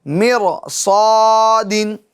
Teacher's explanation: تو را ساکن کے بعد حروف مستعلیہ میں سے صاد آ رہا ہے, تو را کو کیا کریں گے, پر یعنی موٹا پڑھیں گے